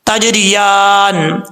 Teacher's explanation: تا اس کا مخرج ہے زبان کی نوک اوپر والے دانتوں کی جڑوں سے لگے تو تا پڑھا جاتا ہے